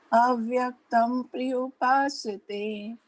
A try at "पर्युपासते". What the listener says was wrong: Yeah, it's not prayu, it is paryu. Yeah, it's not pra, it is par. See, paryu. Paryu.